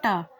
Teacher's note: ट जिस हिस्से पर आपकी जीवा अभी टच हुई है टा बोलते समय, वही आपका मूर्धन्य है